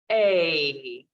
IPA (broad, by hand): eɪ